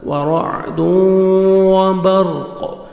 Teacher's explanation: ورعد، یہاں پہ ادغام غنہ کے ساتھ. ورعد وبرق، را کو پر کریں گے، را ساکن سے پہلے زبر ہے، لاسٹ میں قاف ساکن ہو جائے گا اور قاف حروف قلقلہ میں سے ہے، ڈبل ساؤنڈ آئے گا اس کا جب سٹاپ کریں گے.